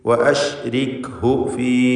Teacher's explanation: ഇതിലുള്ള ദീർഘം മദ് മുൻഫസിൽ ജായിസാണ്. 4-5 ഹറക്കത്തിൻ്റെ അളവിൽ യാഇനെ ദീർഘിപ്പിക്കുക.